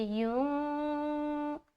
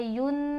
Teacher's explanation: نون کی آواز کو ناک میں چھپاتے ہیں، جو کہلاتی ہے اخفا کرنا۔ جب بھی آپ اخفا کریں گے تو آپ کو یہ دھیان میں رہنا چاہیے کہ آپ کی جو زبان ہے اس حرف کے مخرج پر جا کر ٹچ نہ ہو، زبان جو ہے آزاد ہونی چاہیے، تب صحیح طریقے سے اخفا ہوتا ہے۔ · کیونکہ اخفا کا جو رول ہے نا، اخفا کی جو شرط ہے نا وہ یہ ہے کہ جب آپ اخفا کریں گے تو زبان کی نوک یا زبان کا کوئی بھی حصہ کہیں پر ٹچ نہیں ہوگا